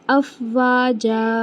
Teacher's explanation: जब हम वफ करते हैं तनवीन को तो उसे एक अलिफ बराबर लेकर आते हैं और खींचते हैं